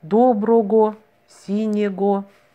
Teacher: Затем в результате ряда фонетических изменений вместо «г» в этих словах стали произносить «в». А писать мы продолжаем по традиции старую букву «г».